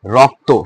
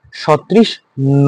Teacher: শব্দের শেষে যুক্ত বর্ণের অ উচ্চারণে কি হয়? ও হয়।